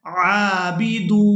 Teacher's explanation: یہاں پر ہم نے عین کو کھڑی زبر کی وجہ سے اور دال کو واو مدہ کی وجہ سے کھینچ کر ادا کرنا ہے